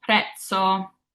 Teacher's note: And that TS sound is what we're trying to achieve whenever we see a Z in Italian. So a Z will never have that Z like zipper. It's always going to have that TS sound.